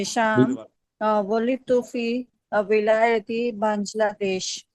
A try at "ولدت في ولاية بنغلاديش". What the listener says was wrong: گاف نہیں ہوتا، گاف نہیں ہوتا.